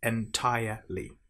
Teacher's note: make sure you don't pronounce the r in entire. It's not entirely, it's entirely.